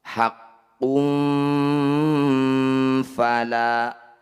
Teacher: Cara bacanya bunyi dhammah tanwin dengungkan dulu, tahan 2 harokat. Ketika dengung lisan kita sudah bersiap di huruf fa. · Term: ikhfa awsato